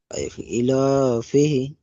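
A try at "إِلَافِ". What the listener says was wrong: ফিহি নয়, ইলাফি।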